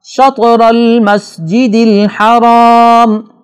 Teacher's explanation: شطر المسجد الحرام شطر میں تا حروف قطب جدن میں سے ہے، یہاں بھی جھٹکے کے ساتھ اس کو پڑھیں گے، اور را پر چونکہ زبر ہے اس کو بھی موٹا پڑھنا ہوگا۔